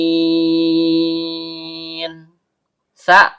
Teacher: Sa, ujung lidah bertemu dengan ujung gigi seri atas.